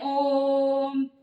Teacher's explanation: तो हम जोर से बोलते हैं ओम, तो उसे हमें प्लुत स्वर कहेंगे। प्लुत स्वर यानी प्लुत स्वर है वो त्रिमात्रिक होता है, त्रिमात्रिक भी बोल सकते हैं इसको, त्रिमात्रिक।